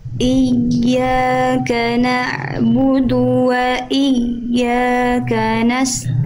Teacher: Sedangkan huruf ya itu sifatnya adalah rokhawah, mengalir suara. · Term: ya bertasydid